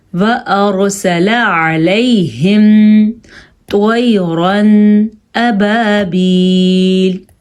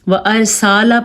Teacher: وارسلا پڑھتے ہیں یعنی کہ لام کو لمبا کر لیتے ہیں، وارسالا پڑھتے ہیں، غلط، سین کو بھی لمبا نہیں کرنا اور لام کو بھی لمبا نہیں کرنا